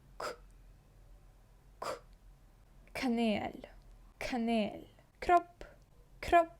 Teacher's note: ми звук к наче видихаємо